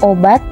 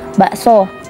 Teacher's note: Selanjutnya, fonem O dengan alofon terbagi dua, yakni O tengah atas bundar belakang dengan O tengah bawah bundar belakang dengan grafem O.